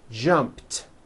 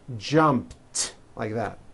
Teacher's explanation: So jump becomes jumped with a T sound at the end.